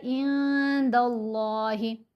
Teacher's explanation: لفظ اللہ کی لام کو موٹا پڑھیں گے